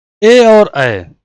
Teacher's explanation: कंठ तालब्य ए और ए, यानी कि तालु से भी और कंठ से भी ए और ए बोले जाते हैं